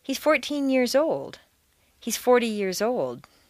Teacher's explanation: be thought of as a separate word in terms of intonation in longer phrases the number plus teen becomes one word